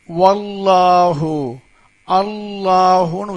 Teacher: அப்ப ஜபர் இருந்தா அல்லாஹ் வார்த்தையில் உள்ள லாமை வாய் நிறைய உச்சரிக்கணும்